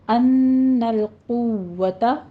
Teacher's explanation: لام پہ قلقلہ نہیں کرنا، اس کو ساکن کرنا ہے